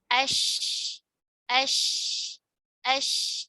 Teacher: Adapun huruf shin, dia tidak sebanyak permukaan yang menempel tidak sebanyak jim. Tapi shin memiliki sifat tafashi, ada sebaran angin di mulut, ya. Ash, ash, tidak aish, tidak ada y-nya ya, tidak aishi, aish, tidak aish, tapi ash, ash, ash.